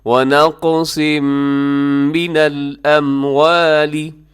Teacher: وَنَقْصٍ، آگے تنوین ہے صاد کی، آپ دیکھیے گا تنوین، اور تنوین کے بعد، اچھا صاد کو بھی موٹا رکھیے گا، اور تنوین کے بعد میم یرملون کا ادغام ہوگا غنے کے ساتھ